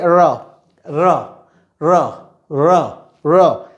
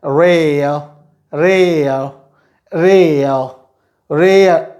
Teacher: we lift it to the upper side of the mouth but we don't let it touch the upper roof of the mouth। हम जो है जो मुंह की छत होती है उससे हम इसको जीभ को टच नहीं करने देते हैं, and we say र र र र र, as in rare rare rare rare, sorry, rarer rarer rarer rarer rarer rarer rarer rarer rarer rarer।